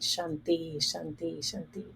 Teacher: The tongue is heading to the roof of my mouth, and then the back of my teeth for shanti, like a TH, shanti, shanti, shanti.